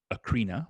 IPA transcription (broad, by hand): əˈkɻinə